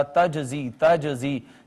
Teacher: قطب جدن میں سے جیم ہے ساکن آئی ہے، ہم نے اس پہ قلقلہ کیا